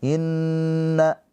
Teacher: Iya, inna itu dia wajib gunnah karena gunnah musyaddadah. Inna, nunnya ada tasdid, dia gunnah ditahan 2 harokat.